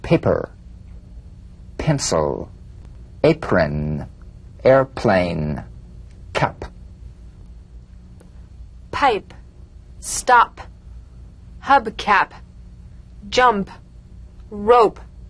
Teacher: the unvoiced labial stop consonant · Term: drumbeat p